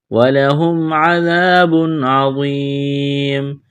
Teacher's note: ذال الف زبر ذا، ذال کو نرم کرنا ہے، الف مدہ ہے، ایک الف کے برابر کھینچنا ہے. تنوین کے بعد عین ہے، حروف حلقی ہے، یہاں پر اظہار کریں گے، آواز ناک میں نہیں چھپائیں گے، غنہ نہیں کریں گے. وا کو موٹا کرنا ہے، یا مدہ ہے، ایک الف کے برابر کھینچنا ہے، وقف کریں گے، تو میم کو ساکن کریں گے.